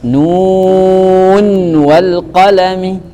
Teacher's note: Jadi Syu'bah di dua kata ini dia baca dengan idgham, sedangkan Hafiz dia baca dengan izhar, membaca nunnya jelas.